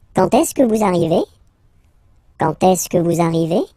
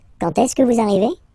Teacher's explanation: don't be afraid to raise your voice a little bit at the end